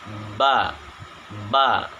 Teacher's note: nafas ditahan ketika menyebutkan huruf ba.